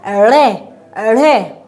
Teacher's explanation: उत्क्षिप्त का मतलब है कि ये झटके से बोले जाते हैं। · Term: उत्क्षिप्त व्यंजन